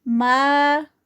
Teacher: یہاں پر الف ہے اور الف سے پہلے زبر ہے تو یہ الف مد ہے، تو اس کے لیے یہاں پر 2 کاؤنٹس کا سٹریچ ہوگا